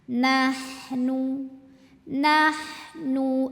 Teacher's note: ha halus kayak enggak ada qotoran sama sekali dari tenggorokan Tengah